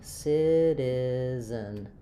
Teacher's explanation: Citizen, I'm going to have a flap t which sounds a little bit more like a light d sound.